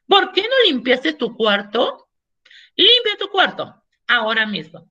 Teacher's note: la expresión bastante autoritaria, bastante imperativa, alzando los grados de entonación, en este caso ascendente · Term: entonación ascendente